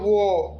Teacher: दंतोष्ठ, मतलब दांत और ओष्ठ, दांत और ओष्ठ का दोनों का यूज है